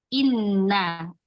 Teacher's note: jahar, jelas, dan syiddah kuat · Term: Hamzah